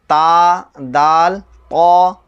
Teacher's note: سرا زبان اوپر کے سامنے والے دانتوں کی جڑ سے تا، دال، طا ادا ہوتے ہیں۔ سرا زبان یعنی یہ زبان ہے، یہ سامنے والی سائڈ وہ سرا ہے، ٹھیک ہے۔